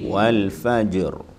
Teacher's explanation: ro sukun atau disukun karena wakaf dan berkaitan fathah atau dhomah maka secara umum tafkhim